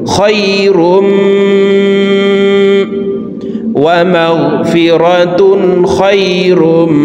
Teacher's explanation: ইদগামে বা গুন্নার 4 হরফের একটি হরফ মিম আসছে, এই কারণে এই তানউইন ওয়ালা রটি তাসদীদ ওয়ালা মিমের সাথে গুন্নার সহিত মিলাইয়া পড়ব।